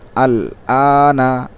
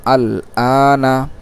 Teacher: আলিফে টান নুনে টান নেই